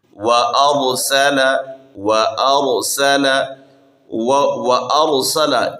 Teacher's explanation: وأرسل وأرسل را پر پڑھنا ہے کیونکہ را سے ما قبل جو حرف ہے حمزہ ہے اس پر فتحہ ہے تو اسی وجہ سے را کو پر پڑھنا ہے.